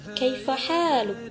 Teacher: untuk intonasi naik di bagian akhir dalam kalimat istifham atau kalimat tanya